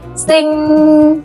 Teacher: Do you hear that soft nasal sound at the end? Okay, so that's exactly the same as the NG sound in Vietnamese.